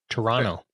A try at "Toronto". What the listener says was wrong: The T is silent. Yeah, Toronto. Yeah, Toronto. And if you want to be really like Ontarian, it's Toronto.